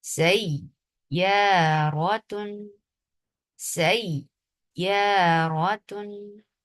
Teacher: جب سین کو یا کے ساتھ ملایا جا رہا ہے تو نبر کیا جا رہا ہے